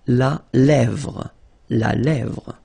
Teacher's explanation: Remember, accent grave here. Really open.